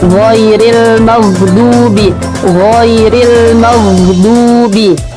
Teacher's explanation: Huruf ghain itu huruf yang tidak bergetar nih